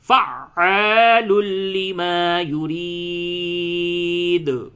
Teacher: عین کے اوپر تشدید ہے. ایک تو عین حروف حلقی ہے، حلق سے ادا کریں، اور تشدید میں شدت یعنی سختی کا بھی مظاہرہ کریں